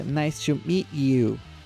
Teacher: vocês perceberam que ela junta a palavra meet you